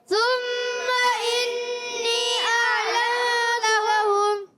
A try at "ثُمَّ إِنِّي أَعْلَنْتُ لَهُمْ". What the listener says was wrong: انی پہ مد بھی ہے، غور کرنا ہے، مد منفصل ہو رہی ہے، کھینچ کر ادا کریں گے، ثم انی اعلنت لهم،